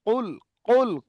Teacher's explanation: কুলটা গলার ভিতর থেকে হবে না, কুল, কুল قل কলকলা করতে হবে